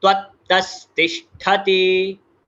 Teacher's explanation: बहुत लोग ठ को ट कर देते हैं, ठ को ट नहीं करना है, इट इज ठ महाप्राण अक्षर